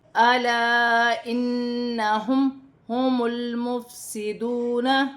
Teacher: الف کی مقدار کھینچ کر پڑھا جائے گا، جیسے الا انہم، نون مشدد میں غنہ کیا جائے گا، میم ساکن میں غنہ نہیں ہوگا